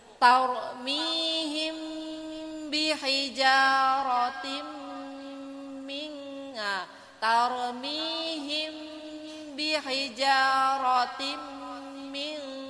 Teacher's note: Bacaan idgham biguna. Jadi kita masukkan suara tanwin kepada mim dengan mendengung.